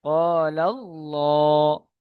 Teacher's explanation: আল্লাহ শব্দের ডান দিকে বা পূর্বে বলুন, ডান দিকে বলুন, এখানে যেটা ইজরায় আছে, আল্লাহ শব্দের ডান দিকে জবর এসেছে, তাই আল্লাহর লাম মুসাদ্দাদকে পুর অর্থাৎ ল পড়তে হবে।